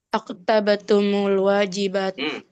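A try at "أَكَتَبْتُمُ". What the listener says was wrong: K-nya fathah bi fathil kaf ya. Akatabatum. Akatabatumul.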